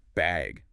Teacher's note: do you need a bag or even just bag with a rising tone?